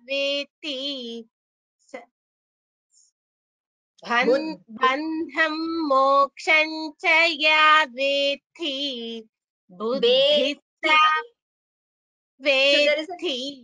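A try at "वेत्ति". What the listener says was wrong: tha is not mahaprana it is just a there are two thas there is no mahaprana ya veti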